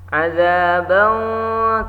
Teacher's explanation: tanwin patah bertemu qaf, ifa ab'ad ya. Cara bacanya didengungkan, ditahan dengungnya.